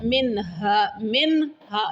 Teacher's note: نون ساکن، تو یہاں ہم نے کیا کرنا، اظہار کرنا، کیونکہ حروف حلقی میں سے کیا آ گیا ہے، ہاں آ گیا ہے۔